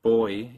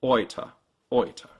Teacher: The big difference is in your lips. When you say boy, your lips relax at the end, whereas in German they stay rounded and tense the whole way through.